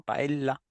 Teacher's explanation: Lo pronuncian como una L con una pequeña pausa